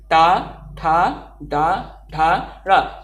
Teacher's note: दांत को टच नहीं करता है, जीभ का हिस्सा ऊपरी छत के अगले भाग को टच करता है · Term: मूर्धा